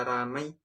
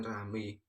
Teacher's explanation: perubahan dua bunyi vokal atau vokal rangkap diftong menjadi vokal tunggal monoftong